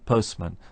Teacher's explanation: the normal way of pronouncing postman is with no t sound in the middle